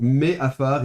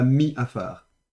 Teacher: Donc normalement, on voudrait mettre un dagesh dans le ein, et donc il y a un déplacement compensatoire, le chirek devient un tséré, donc me afar et pas mi afar.